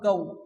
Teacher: কাফ ওয়াও জবর কাউ, ওয়াও সাকিন, তার ডান দিকের অক্ষর জবর থাকলে কি হয়? ওয়াউলিন, নরম আওয়াজ তাড়াতাড়ি পড়তে হয়, কাফ ওয়াও জবর কাউ।